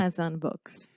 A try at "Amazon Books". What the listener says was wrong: Yes, so Amazon, the final vowel sound on Amazon. And then books, this is what we call the other U sound here at Inglés no Cru. But at first I was hearing you say books, saying ooh. But this is a really deep sound from the back of your throat. So, books.